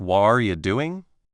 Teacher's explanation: the T sound in What are you doing? often becomes more like a quick D sound or even disappears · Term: connected speech